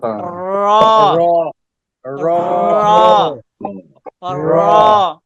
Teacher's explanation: কোথায় লাগে কোথায় তালুতে লাগিয়া হ্যাঁ লাগবে র ঠিক ওখান থেকে জিউবার আগার উল্টা পিঠ সে ঠিক ওই বরাবর তালুতে লাগবে তখন হবে কি হবে র র মোটা করে মোটা করে র